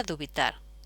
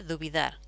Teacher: ¿Qué ocurre luego? Ocurre que esta T, que es una consonante sorda, pasa a sonora y nos queda dubidar